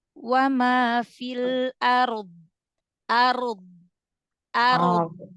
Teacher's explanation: Sisi lidah kanan atau kiri atau kedua Sisinya yang ditekan ke gusi bagian dalam gigi geraham atas